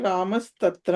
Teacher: plus అపి అవునండి ఉదాహరణ రామస్తత్ర దగ్గర రామః తత్ర అక్కడ విసర్గ సకారం అయింది కాబట్టి రామస్తత్ర అయింది